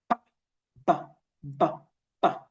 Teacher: Okay, it's voiced because you feel the vibration in your throat, and it's bilabial because both lips need to come together, and it's plosive because it counts for like in form of an explosion.